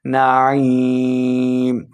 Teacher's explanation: اکثر لوگ یہاں پہ کیا غلطی کرتے ہیں، نعیم پڑھتے ہیں، حمزہ کی آواز لے کے آ جاتے ہیں، تو یہ حمزہ نہیں ہے بلکہ عین ہے، تو عین کو حلق کے درمیان والے حصے سے ادا کریں